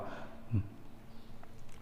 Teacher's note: दंतोष्ठ मतलब जो दांत से भी और ओष्ठ दोनों से निकले